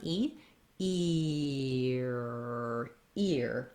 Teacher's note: i try ear ear what i want to feel is that when i'm saying the e sound my tongue is forward it fills up my mouth it's tense and then i have to glide and pull into the er position so i like to think of it as moving ear if · really slowly i start on e er ear and of course when we're speaking ear we want to do it as one movement one sound that glides